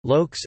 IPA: lūɔ̯ks